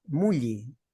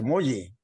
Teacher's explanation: En vez de la O le ponen la U y en vez de la E, la I.